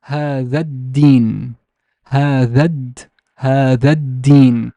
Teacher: The whole al-ta'rif and its wasla, the hamza of wasla or wasl, are completely gone. I would just read هذا and then start with the deen.